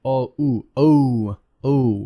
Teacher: there's a long o boat because it's it's glide oh ooh oh oh it glides into ooh